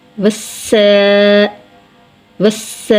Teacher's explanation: سین حروف صفیریہ میں سے ہے اور سین کے اوپر کھڑی زبر ہے، کھڑی زبر کو کھینچ کر ادا کریں گے